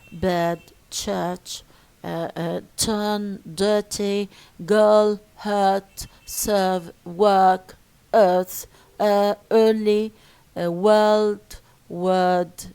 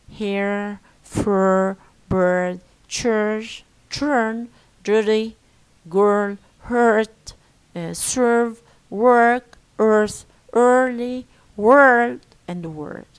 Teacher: R is pronounced in all positions. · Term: rhotic accent